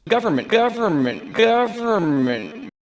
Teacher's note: I can't hear the N because the lips are closing in preparation